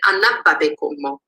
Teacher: you would get anna babe como with low tone across both the noun and the adjective.